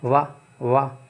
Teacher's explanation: यानी कि जैसे वा बा नहीं, वा, ये वाला, इसे बोलोगे वाह तो जो नीचे वाला होठ है ना, वो दांतों में ज़रूर स्पर्श करेगा, बिना उसके ये बोल नहीं सकते वाह वाह। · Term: दंतोष्ठ व्यंजन